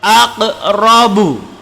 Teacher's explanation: Aqrabu, qaf mati berada di pertengahan. Ini disebut dengan qalqalah sughra.